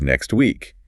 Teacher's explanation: You have the X sound, which is really a K and an S mashed together. Then the T and then the W from week.